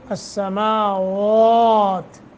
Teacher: واو کو پر پڑھیں گے اور ایک الف کے برابر مد کریں گے